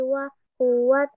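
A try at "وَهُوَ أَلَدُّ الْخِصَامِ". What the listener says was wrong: wa huwa alat dul, bukan wa huwa. Ada huruf alif fathah, wa huwa alat dul. Bukan wa huwa ya, kecuali itunya sukun, alif lamnya sukun baru bertemu dal langsung ya. Atau ketika nggak ada harokatnya langsung wa huwa ya. Tapi karena alifnya ada harokat fathahnya, jadi bacanya a alat dul ya.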